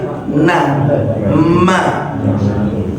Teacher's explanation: Al-khaysum itu hidung. Huruf yang keluar dari sini, yaitu huruf mim dan huruf nun. Mim nun itu di sini. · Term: gunnah